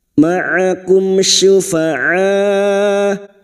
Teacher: mim sukun bertemu syin Idhar syafawi mim sukun dibaca jelas tanpa mendengung